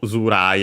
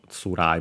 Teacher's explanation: also Zurai, a voiced version of Tsurai